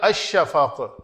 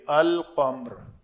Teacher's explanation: کیونکہ لام اور شین دونوں ہی حروف شمسی ہوئے ہیں اور قریب المخرج ہیں تو ادغام ہو گیا